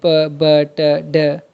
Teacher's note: ये आप तभी प्रोड्यूस कर सकते हैं जब आप एयर फ्लो को कम्प्लीटली ब्लॉक करते हैं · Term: स्टॉप्स